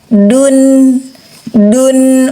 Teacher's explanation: ujung lidah menekan pangkal gigi seri atas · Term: huruf Dal